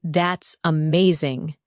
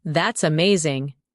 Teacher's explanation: When you say that's amazing, your tone rises with excitement. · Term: rising tone